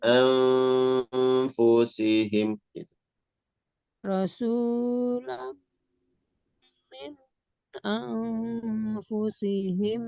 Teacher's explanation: Nun dibaca samar disertai dengan dengung